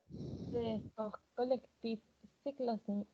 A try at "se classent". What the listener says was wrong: C'est classe. On ne prononce pas E-N-T. Jamais. Nunca pronunciamos E-N-T. C'est classe.